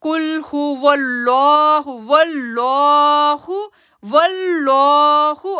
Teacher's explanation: اب لام کو ہم نے پر آواز سے پڑھنا ہے